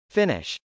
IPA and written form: fˈɪnɪʃ (finish)